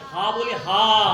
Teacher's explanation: হা যখন বলছি, হা যখন বলছি, হা যখন বলছি, দ্যাট ইজ হাটা হচ্ছে মহাপ্রাণ বর্ণ। আমরা অধিক হাওয়া দিচ্ছি বলে দ্যাট ইজ মহাপ্রাণ বর্ণ